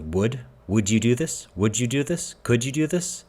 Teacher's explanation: I don't pronounce the ELLs at all so wood and wood are effectively the same pronunciation wise